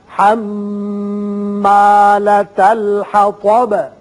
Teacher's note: بات ساکن کر دیں گے، حطب پڑھیں گے